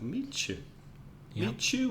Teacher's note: the meet you becomes almost like a cha in the middle